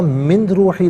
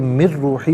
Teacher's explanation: نون ساکن ہے، اسے روحی کی را کے ساتھ ملائیں گے، را کی آواز کو ادا کیا جائے گا، من روحی نہیں بلکہ مر روحی پڑھیں گے۔ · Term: یرملون کا جو قاعدہ